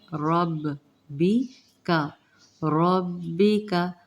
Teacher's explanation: عند ربک، رو کے اوپر زبر ہے، رب پہلے تشدید والا حرف 2 مرتبہ پڑھا جاتا ہے